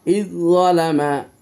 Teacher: জাল উচ্চারণ হয়নি, জালটা ড্রপ খেয়ে জদ উচ্চারণ হয়েছে। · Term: ইদগামে মুতাজানিসাইন